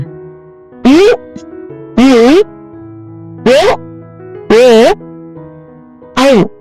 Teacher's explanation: உ, உ, ஓ, ஓ, ஔ ஆகிய 5 வாய் திறக்கும் முயற்சியுடன் இதழ்களை குவிப்பதால் பிறக்கின்றன.